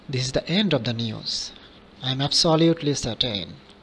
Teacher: If someone is asked a question and the reply is yes or no, it will be understood that the question is now answered and that there is nothing more to be said. If you use a falling intonation, thus the falling tone gives an impression of finality. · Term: Fall intonation